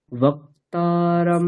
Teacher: মটা বলে একটু থামার মতন ভান করে আবার উপরে উঠিয়ে দিতে হবে